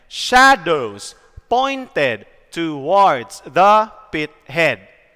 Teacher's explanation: This is stressed, unstressed, stressed, unstressed, stressed, unstressed, stressed, unstressed, and stressed. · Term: trochaic meter